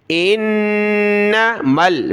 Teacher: نون کے اوپر تشدید ہے تو غنہ ہوگا، یعنی ناک میں آواز پیدا کریں گے